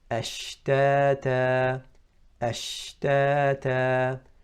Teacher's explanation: So when we pronounce Sheen correctly, the sound spreads within the mouth. Ashtata. It starts from the makhraj, from the middle of the tongue with the middle of the upper palate and outwards. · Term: Tafashy